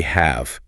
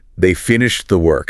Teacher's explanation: often the H at the beginning is dropped entirely and the A vowel becomes a schwa. So it sounds like they finished the work. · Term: weak form